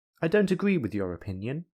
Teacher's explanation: the falling rising intonation is used when the speaker is disagreeing with something or someone